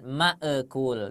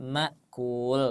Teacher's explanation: Ini ma ditahan saja tapi jangan ada qalqalah ya.